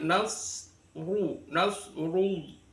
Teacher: ro kalau berharakat dummah itu hukumnya adalah ro dibaca tafkhin tebal